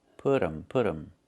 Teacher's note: We make a reduction. We say put them. The t changes to a fast d.